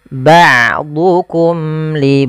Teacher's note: ba a Ain memiliki Salah satu sifat yaitu sifat bainiah yaitu tidak terlalu ditahan suaranya dan tidak terlalu dialirkan tapi tengah tengah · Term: sifat bainiyah